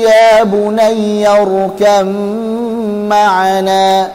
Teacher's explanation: Asalnya ya bunayya rkab ma'ana, tapi ba'nya diidghamkan ke mim sehingga jadi mim bertasydid dan dipanjangkan gunnahnya